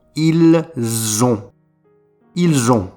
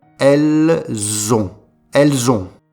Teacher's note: Le T ne se prononce pas et on fait la liaison. Ils ont. Ils ont.